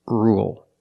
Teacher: With rule, we don't say rule. There's no y. It's just ru, dark L, ul, rule.